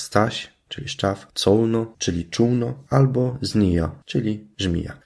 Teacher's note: Wymowa najbardziej dokładna i uśredniona zawierać będzie mazurzenie, czyli sy, cy, z zamiast polskiego szy, czy, ży